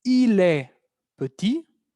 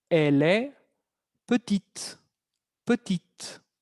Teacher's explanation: Y entonces la consonante T no se pronuncia al final